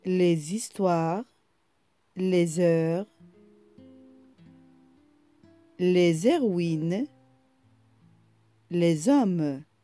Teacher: nous lisons les deux mots comme si H n'existe pas. Donc, on fait la liaison.